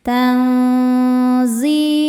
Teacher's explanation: tanzilum tan di sini ada hukum tajwid namanya ikhfa hakiki ausat karena nun sukun bertemu huruf zai cara bacanya nun disamarkan ke zai disertai bunyi dengung dengan tingkat dengung dan kesamarannya sama besar